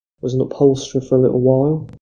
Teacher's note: a T occurs in the segment that would be subject to T glottaling in a position between vowels within a word · So both speakers engage in this process of T glottaling.